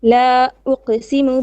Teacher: la has 4 beats of mud